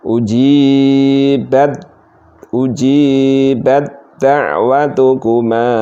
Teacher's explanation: Seperti ini sifatnya enggak sama, makhrajnya sejenis cuma sifatnya tidak sama, maka diidghamkan langsung. Ujibat langsung masuk ke dal. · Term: idgham mutajanisen shaghir